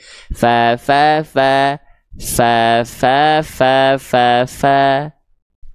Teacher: ujung gigi seri atas kita ketika kita melafazkan huruf Fa itu disentuhkan ke bibir bawah bagian dalam yang basahnya